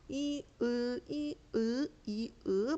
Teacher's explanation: 그래서 이으 이으 이으 발음해 보면은 입꼬리도 안 움직이고 입술도 움직이지 않는데 혀가이 할 때보다 으 할 때 뒤로 좀 더 슝 들어가는 느낌이 납니다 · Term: 후설